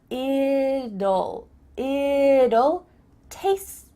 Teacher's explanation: when we say the contraction it will, we kind of add a little U sound before the L. It kind of sounds like U-L-L.